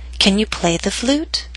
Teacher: It first hits the ground and then bounces up into the air. So down a little bit on play and then start rising up, up, up until the end of the question. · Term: rising intonation